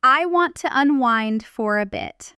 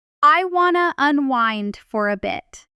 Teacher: At natural, relaxed speed, want to nearly always compresses into wanna,